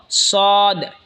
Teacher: সদ জিহ্বার আগা সামনের নিচের দুই দাঁতের আগার দিকে লাগা উচ্চারণ হবে সদ